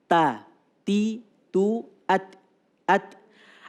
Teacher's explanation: Hames itu jariyanun nafas. Kalau dikeluarkan hurufnya, ada aliran nafas yang keluar.